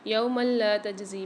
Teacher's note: یوم لا تجزی میم کے اوپر 2 زبر آ رہے ہیں، یہاں قاعدہ ہو رہا ہے ادغام بلا غنہ کا، یہاں پر ہم غنہ نہیں کریں گے، ادغام کر کے پڑھیں گے